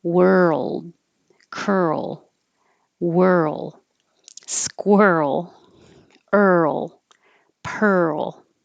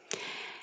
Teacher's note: it all just sounds like er e-r and then an l